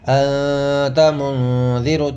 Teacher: دونوں میں ناک میں آواز جائے گی، اس لیے کہ یہاں پر اخفا ہو رہا ہے، نون ساکن کے بعد اخفا کے 15 حرفوں میں سے تا آ رہا ہے۔